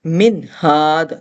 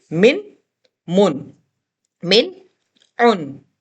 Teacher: ہم نے نون کو ظاہر کر کے پڑھنا ہے، ناک میں نہیں جانے دینا ہے، اور زبان نون کے مخرج پر لگ کر فوراً ہٹا دیں گے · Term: اظہار